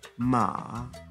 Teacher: a tone that falls and then rises known as a contour tone